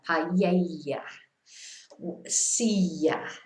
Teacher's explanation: I always pronounce it as a Y. I think in this area, it's more or less a Y sound.